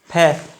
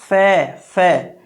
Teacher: लेकिन जब आप वो उर्दू वाला जब फै बोलेंगे जिसके नीचे नुक्ता लगा होगा उसको बोलेंगे फै। वह ध्वनि होठ भी इस्तेमाल होंगे और दांत भी इस्तेमाल होंगे